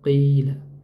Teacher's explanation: Qila kasrahnya panjang dua harakat.